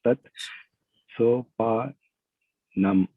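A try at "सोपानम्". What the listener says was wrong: Yes, sopanam. Sopanam means steps.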